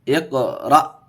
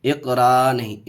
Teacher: اقرأ، اقرأ دیکھیے جھٹکا کیسے پڑھیں گے، جھٹکے سے، اقرأ، اقرا نہیں، اقرا نہیں، اقرأ، اقرأ. حمزہ ساکنہ کے پڑھنے میں جھٹکا ہوتا ہے